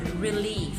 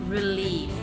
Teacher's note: So iamb. That means the stress is found in the second syllable in a word, or if it's in a line, the second syllable in the line.